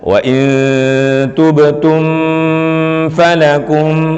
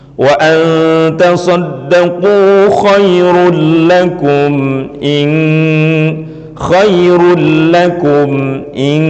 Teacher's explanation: Sama hukum bacaannya, yaitu izhar syafawi. Harus dibaca dengan jelas mimnya, tidak boleh dibaca dengan samar, tidak boleh artinya ditahan mim itu, tapi jelas dan langsung masuk pada kalimah setelahnya.